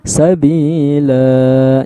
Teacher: Mad iwat nih loh, ada tanwin nih, 2 garis di atas nih. Aslinya kita baca lan, tapi karena tempat pemberhentian menjadi sabila, 2 harokat panjangnya. Nah, maka cara berhenti yang seperti itu nggak dibaca lan lagi, maka disebut dengan mad iwat ya.